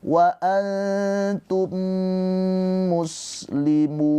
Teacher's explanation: Mim dan mim kan sama semisal. Maka cara bacanya ditahan dua harakat mimnya. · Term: idgham mimi